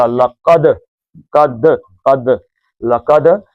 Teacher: لام پتلا، کاف موٹا، دال کا قلقلہ